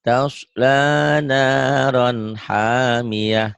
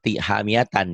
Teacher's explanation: Tak marbutoh itu jika dihentikan bunyinya jadi ha. Jadi tasla naron hamiatan, tan dihentikan jadi hamiyah gitu.